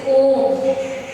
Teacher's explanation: प्लुत स्वर है, जिनको बोलने में तिगुना समय लगता है